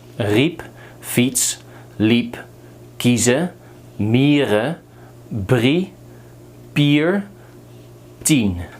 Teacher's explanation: don't make the mistake to say this as E like the English, but keep it short, say E. IE is E.